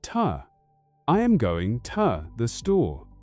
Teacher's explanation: I am going to the store. But a native speaker will almost never say to. They reduce it to ta.